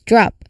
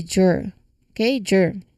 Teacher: it's the du sound moving straight into the r sound so that's drop the confusion here often comes with letting it sound like a j sound followed by r right which would be jur okay jur that's a confusion here so we are going to for drop and not drop. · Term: DR connection